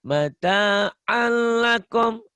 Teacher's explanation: Alnya idgham bila gunanya jangan ditahan ya. Mata alakum al jangan ditahan di sini.